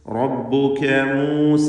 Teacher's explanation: മൂസ എന്നതിലെ ദീർഘം മദ്ദ് മുൻഫസിൽ ജായിസ് എന്നതാണ്. 4-5 ഹറക്കത്തിൻ്റെ അളവിൽ അതിനെ ദീർഘിപ്പിക്കുക